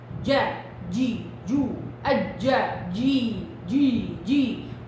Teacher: قوية شديدة انفجارية الجيم، انتبهوا لها